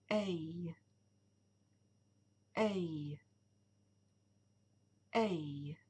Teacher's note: Ce son est formé avec la bouche légèrement ouverte et les lèvres et tous les muscles relâchés. Le son lui-même est long et voisé, et il est formé au milieu de la bouche. La langue fait un mouvement vers la voûte du palais pendant que le son s'est produit.